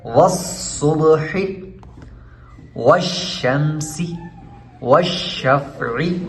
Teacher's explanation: صاد کو بھی خوب موٹا کر کے پڑھنے، حروف مستعلیہ میں سے ہے